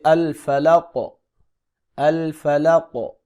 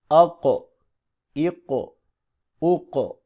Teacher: قوف کی آواز موٹی اور جھٹکے والی ہوتی ہے